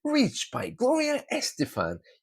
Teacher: there's an upward flow to my intonation